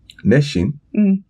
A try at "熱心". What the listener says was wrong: Maybe your shi is a little bit sh, so put it s. Shi.